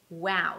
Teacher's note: we begin with a W sound W as in wow so round your lips